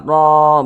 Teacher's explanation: Huruf ro yang memiliki tanda baca fathah dibaca tebal, dibaca tabkhim, sehingga pangkalisan itu naik terangkat ke atas ketika kita mengucapkannya.